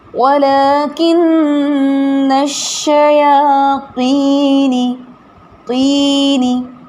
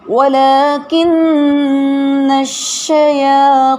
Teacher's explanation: طو کو ادا کرنے کے لیے زبان کی جڑ اور وسط کو اوپر اٹھایا